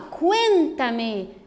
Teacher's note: Veja que a sílaba tônica, que é a mais forte, ela está posicionada na antepenúltima sílaba, né? Ó, última, penúltima, antepenúltima sílaba.